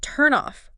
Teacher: the consonant sound basically jumps over and kind of kickstarts the vowel sound in the next word. It bridges the gap. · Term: sound linking